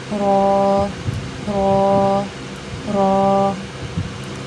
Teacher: را کا مخرج ہے زبان کی پشت والا کنارہ اور اوپر کے دانتوں کے مسوڑے۔